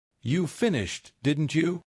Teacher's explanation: Rising tone equals I am unsure.